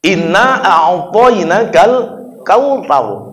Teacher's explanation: sedangkan dia tidak tahu makhraj itu keluar di ujung lidah, akhirnya bunyinya sa melulu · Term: huruf ta